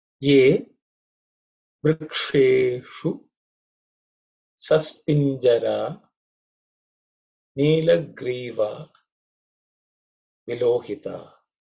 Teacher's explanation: There are no aspirated consonants here, but vikshe and shu, in both cases the sha is cerebral sha, where the tip of the tongue should point upwards.